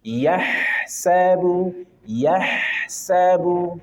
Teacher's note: ada hak punya sifat rokhawah, maka alirkan sempurna dengan sempurna